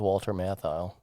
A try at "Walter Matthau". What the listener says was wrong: It kind of sounded like you put an L in there. It kind of sounded like you said Walter Matthau.